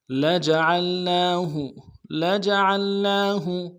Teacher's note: نون کے اوپر کھڑا زبر ہے، ایک مقدار میں کھینچیں گے، ہاں کو نون سے ادا کریں گے۔ · عین کو موٹا کرتے ہوئے لام کے ساتھ ملائیں گے